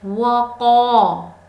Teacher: وَقَالَ الْإِنسَانُ مَا لَهَا، وقا قاف کو موٹا پڑھیں گے، اس کے علاوہ الف سے پہلے قاف پہ زبر ہے یعنی الف مدہ ہے، اس کو ہم ایک الف کے برابر کھینچ کر ادا کریں گے